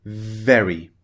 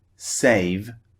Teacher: now I'd like to point something out about the V sound V when it's at the beginning of a word it's much stronger than when it's at the end of a word